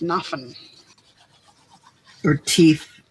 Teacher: the th sound that's pronounced as an f